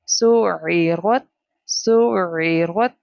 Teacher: comes from the middle part of the throat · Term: عين